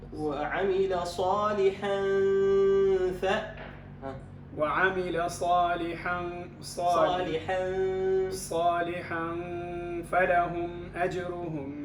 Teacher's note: والفاء يخرج من أطراف الثنايا مع الشفة السفلى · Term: الإخفاء عند الفاء